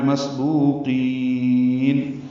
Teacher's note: بمسبوقین سین ساکن ہے، اس پہ ہمس ہے. بو واو مدہ ہے، قاف پر ہے اور قاف کو لمبا کرنا ہے.